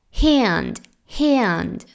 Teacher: este sonido de hand es es un sonido a abierto y que se pronuncia más o menos ea ea pero compacto